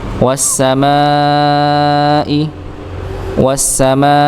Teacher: Ya, berikutnya pada as-sama di sini maka mimnya dipanjangkan. Panjangnya tidak cukup 2 harakat tapi 4 harakat atau 4 atau 5 harakat.